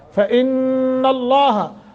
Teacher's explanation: غنہ بھی کریں گے اور لفظ اللہ کو موٹا کریں گے